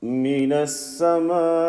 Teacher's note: this E sound, no overstretching, and make the Hamza sound clear and distinctive.